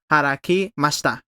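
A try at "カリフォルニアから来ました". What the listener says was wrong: So kara. So I know lots of Spanish speakers want to pronounce this hara, but it's kara kimashita. Kara kimashita. Kara kimashita.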